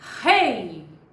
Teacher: enquanto a sonoridade sai oralmente é um ditongo oral